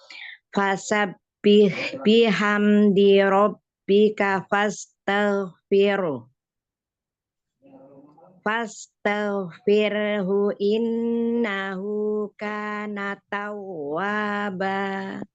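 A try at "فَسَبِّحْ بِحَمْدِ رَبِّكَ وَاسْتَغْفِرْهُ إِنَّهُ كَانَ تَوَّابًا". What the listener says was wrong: Itu wastaghfir ya, bukan fastaghfir. Wastaghfir.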